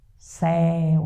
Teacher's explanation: Então, céu é o ditongo aberto monossilábico, monossílabo.